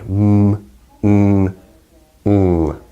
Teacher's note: the velum is lowered, and that allows air to go through the nasal cavity, and that's really important for producing sounds like mm, mm, mm. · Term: Nasal sounds